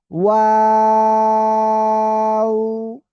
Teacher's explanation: এই যে দুই ঠোঁট শুরুতে গোল হবে, মাঝখানে দুই দিকে প্রসারিত হবে, শেষে এসে আবার গোল হবে। ঠিক আছে? তিন আলিফ টান হবে।